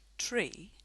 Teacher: It's very hard to say a word like tree without turning the t into a ch-like sound.